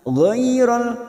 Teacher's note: G fathah bertemu ya sukun Huruf layin kita lunakkan